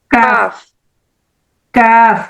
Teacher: जबान की जड़ और सख्त तालू जबान की जड़ और सख्त तालू से अदा होता है। जब हम जुबान की जड़ को सख्त तालू से लगाते हैं तब काफ की आवाज निकलती है।